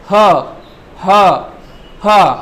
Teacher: तो स्वर यंत्री पे आगे वायु जब टकरा रही है या उसे हिला रही है तब ह की आवाज आ रही है। ह, ह, ह। आपको अपने आप महसूस होगा कि स्वर यंत्री से आवाज आ रही है।